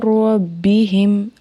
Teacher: نون ساکن کی جو آواز ہے وہ مدغم ہو گئی ہے، ٹھیک ہے۔ تو ڈائریکٹ جو ہے وہ را کی آواز آ رہی ہے کیونکہ یہاں پہ ادغام ہوا ہے، ہم نے یہاں پہ ادغام کیا ہے، ٹھیک ہے۔